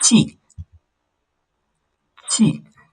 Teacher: Chi is a falling tone.